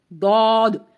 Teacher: داد زبان کی کروٹ اور اوپر کے 5 داڑوں سے لگے تو داد ادا ہوتا ہے، یہ دائیں سائڈ پہ بھی لگ سکتی ہے زبان اور بائیں سائڈ پہ بھی یا پھر دونوں سائڈ پر، ٹھیک ہے۔ داد کو ادا کرتے وقت زبان جو ہے سمٹ کر پیچھے کو چلی جاتی ہے، داد، اس کی آواز دال سے نہیں بنانی کیونکہ دال کا مخرج اگلے 2 دانت ہیں، ٹھیک ہے، اگلے 2 دانتوں کی جڑ دال اور داد، اس میں زبان پیچھے جائے گی اور اس کو لمبا بھی کرنا ہے، داد پر حروف میں سے ہے۔